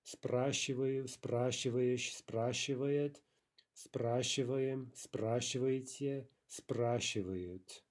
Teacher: It might take some practice to keep the stress there on that first syllable, despite all of the unstressed syllables that follow.